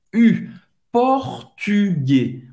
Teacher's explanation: Ele não falou português, ele falou português, com esse U bem francês, que é um som que não existe na língua portuguesa, em português, português. Esse U é o biquinho francês, faz a boca do U e fala I.